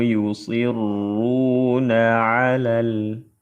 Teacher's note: dibuang huruf madnya karena bertemu dua sukun dalam dua kata karena yang sukun pertama huruf mad maka huruf madnya dibuang dalam lafaz alal lam lam takrif bertemu dengan ha alif lam qamariah. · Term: iltiqus sakinain